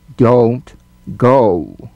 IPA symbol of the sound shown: əʊ